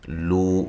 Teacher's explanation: واو مدہ ہے، اس کو بھی ایک الف کی مقدار کے برابر لمبا کرنا ہے